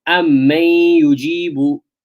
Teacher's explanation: The noon and ya, they merge, and there's nasalization. Two harakas. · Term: idgham with ghunnah